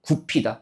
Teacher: 비읍과 히읗이 만나서 거센 소리 피읍으로